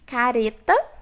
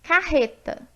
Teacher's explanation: eu troquei o tep pelo r forte · em posição intervocálica, o R fraco, que é representado pelo TEP, ele é um fonema distinto do R forte, que é representado por esse R grande com esse pauzinho em cima.